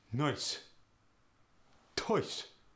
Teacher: The oi sound goes to the e sound, and there's no rounding of the lips. For instance, noise and toys go to noise.